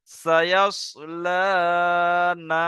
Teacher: সায়াস লা, নুন আলিফ জবর না। তাহলে লাটা একালিফ টান হবে, ফের নুন আলিফ জবর না, এটাও একালিফ টান হবে।